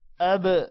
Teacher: یہ جو ب کی آواز ہے اس کو قلقلہ کی وجہ سے ہم نے ب کی آواز آخر میں نکالی ہے